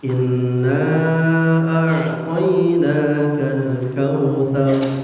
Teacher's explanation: Inna panjang 4 sampai 5 harakat. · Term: Jaiz munfasil